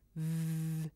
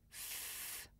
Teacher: when I make a voiced sound like V my throat vibrates but when I make a voiceless sound like f it's just air coming through my mouth